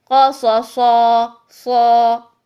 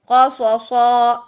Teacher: قاف موٹا ہے قا، صاد موٹا ہے صا، اور صاد پھر موٹا ہے سن